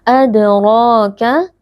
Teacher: Huruf tebal dibaca dengan mengangkat pangkal lidah karena RO di sini berharakat fathah